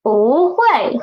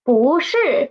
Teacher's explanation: So summary of this tone Sandy is when Bu is before a fourth tone syllable, it will change into second tone. And in other occasions, nothing happens. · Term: tone change